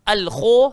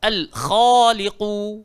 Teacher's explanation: Tak kena mengena dengan bibir sebab kha keluar dekat dalam tekak.